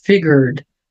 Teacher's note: Lembra de puxar bastante o R é bem enrolado